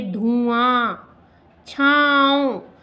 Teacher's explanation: तो हमारी जो प्रोनंसिएशन है वो नाक से ज़्यादा निकलती है। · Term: अनुनासिक